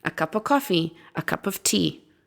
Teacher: So we would just have the schwa at the beginning and the schwa after the word cup as well, a cup of tea, not a cup of tea. You wouldn't pronounce the f, right?